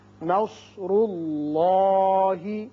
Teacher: نون باریک ہوگا، صاد پر ہوگا، را بھی پر ہوگا، اس لیے کہ اس کے اوپر پیش ہے. اسی طرح اس میں اللہ جو ہے اس کے اندر جو لام ہے یہ پر پڑا جائے گا، اس لیے کہ پہلے پیش ہے